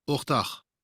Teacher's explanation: the accent goes a little bit more to the last syllable in Munster